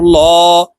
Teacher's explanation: এই লামকে ল অর্থাৎ মোটা করিয়া পড়তে হবে